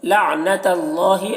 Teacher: اللہ کلام کو پر پڑھیں گے، اللہ کلام سے پہلے زبر ہے